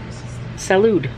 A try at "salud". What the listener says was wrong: Nope. You definitely don't pronounce the D there. no way that's correct.